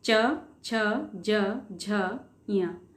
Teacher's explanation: आपकी टंग ऊपर तालु पे टच हुई होगी, ऊपर की तरफ, है ना.